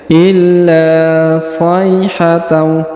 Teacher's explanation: huruf sha diayun sekali karena di depannya terdapat ya sukun